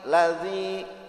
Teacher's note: Zal sama sa tuh jadi lidahnya digigit sedikit ujungnya